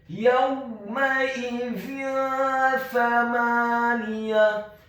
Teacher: Kemudian huruf mim-nya dibaca fathah 1 harokat, huruf hamzahnya dibaca tipis, tarqiq, kasrah 1 harokat, dan huruf za-nya dibaca tipis, tarqiq, lidahnya agak keluar sedikit · hukum bacaannya adalah dibaca secara samar-samar ikhfa